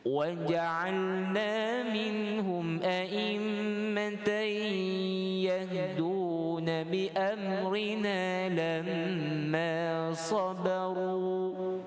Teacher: Yang tebal tuan-tuan huruf sad dengan huruf ra pada hujung kalimah sabaru, 2 harakat dan tebal, bacaannya tafkhim. Yang amrina itu kita baca dengan nipis, tarqiq, nipis.